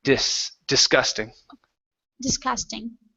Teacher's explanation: first uh first s is an unvoiced S sound